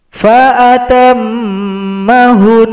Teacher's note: Jangan sampai dipanjangkan hu-nya, itu salah. Fa'atammahun, bukan hun, tapi langsung tasydid saja.